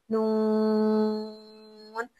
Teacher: नून में गुना की सिफत पाई जाती है, नाक से आवाज निकलती है